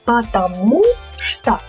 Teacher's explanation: So the stress falls on U here, потому что. So when we say it quickly, we reduce these O's. · here we have unstressed O's. So the stress falls on U here